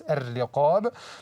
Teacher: Don't vibrate the ras. Ar-Riqab, the ra is full mouth because it has shadda with kasra, not shadda with fatha.